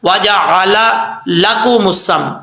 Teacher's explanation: दोनों लाम है, तो इनको क्लियर करके पढ़ना है, अलग अलग करके वाज़े करके